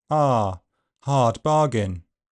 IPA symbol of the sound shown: ɑː